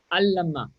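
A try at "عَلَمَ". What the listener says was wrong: We don't have a shadda anywhere. no, just go easy. Don't have to emphasize anything. Now, why do you say allama? Just alama.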